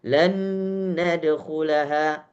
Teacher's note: Nun yang pertama masuk total ke dalam nun yang kedua sehingga seperti menjadi satu huruf. Itu namanya idgham. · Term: idgham kamil